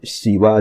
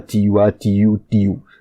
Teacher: Any kind of s or sh sound becomes a t, t, and then the ending tends to be lost.